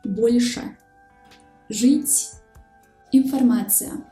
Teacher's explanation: These 3 consonants are pronounced hard when they are followed by a soft vowel.